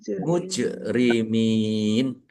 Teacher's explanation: Jim sukun bacaan kolkolah dibaca memantul, ditampakkan pantulannya